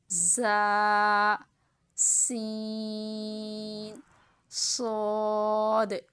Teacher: ان کو ادا کرتے وقت سیٹی کی طرح تیز آواز نکلتی ہے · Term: حروف صفیریہ